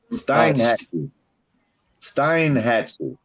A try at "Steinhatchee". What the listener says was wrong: It's actually pronounced Steenhatchee, but it's spelled Steinhatchee.